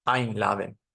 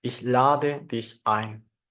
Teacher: verbos no están separados por ejemplo el verbo a Laden invitar el acento va a caer en la partícula separable